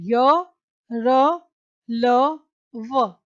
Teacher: और इन व्यंजनों का उच्चारण स्वर तथा व्यंजन के मध्य का सा होता है। उच्चारण के समय जिह्वा, जो हमारी जीभ है, मुंह के किसी भाग को स्पर्श नहीं करती। अब आप बोल के देखिए, ये चारों जो हैं अंतस्थ व्यंजन य, र, ल, व, इनका उच्चारण जीभ, तालु, दांत और होठ के परस्पर सटाने से होता है, किंतु कहीं भी पूर्ण स्पर्श नहीं होता।